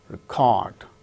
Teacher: When it is used as noun, the first syllable gains stress, wrecked. Second syllable gains stress when it is used as verb, record.